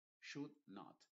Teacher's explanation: Y la L, por cierto, no se pronuncia.